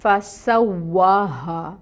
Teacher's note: فسواہا، تو فا میں پھر ہمس لائیں گے اور فا کی جو حرکت ہے وہ 1 کاؤنٹ. سین میں صفیر ہوتی ہے، سیٹی لے کے آئیں گے